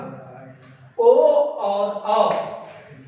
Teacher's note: कंठ का मदद तो ओ और औ में लिया जा रहा है, साथ साथ तालु की जगह इसमें ओष्ठ हरकत में आ रहा है। ओष्ठ के द्वारा इसके मदद से ही ओ और औ का उच्चारण स्थान होता है। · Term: कंठ और ओष्ठ